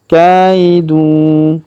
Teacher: Fa in kana lakum kaidun, perhatikan huruf ka kita ayun sekali karena ya sukun di depannya